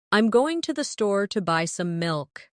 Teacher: Notice how certain words are stressed. Going, store, buy, milk. Now, try repeating it with the same emphasis.